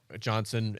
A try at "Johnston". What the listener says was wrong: Johnston. I thought you said Johnson.